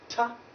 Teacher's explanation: the tip of the tongue will raise up to block the air around the teeth ridge